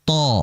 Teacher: Adapun huruf th, dia harus dinaikkan pangkal lidahnya karena dia harus dibaca tafkhim atau tebal. · Ta, ujung lidah serta pangkal lidah dinaikkan.